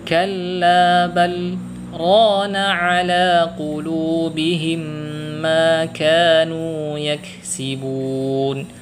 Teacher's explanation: agar kita terhindar dari membaca lam sukun ini dengan cara mengidghamkan ke huruf ra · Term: saktah